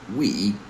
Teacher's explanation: we're going to round our lips for the W sound and then go straight to E sound.